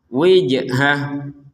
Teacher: ada jim sukun, maka kita harus memantulkannya